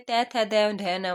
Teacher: दंत से। तो दंत में त थ द ध न वाला आता है